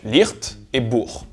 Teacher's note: Comme en alémanique et en bavarois, le yiddish n'utilise que le son ch [x].